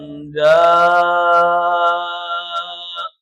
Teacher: یہاں آخری حرف حمزہ ہے، جب ہم نے حمزہ کو ساکن کیا تو آخری حرف کو ساکن کرنے کے بعد دیکھا کہ آخری حرف حمزہ ہے اور حمزہ ساکن ہو گیا، تو حمزہ ساکن کو جھٹکے کے ساتھ پڑھتے ہیں۔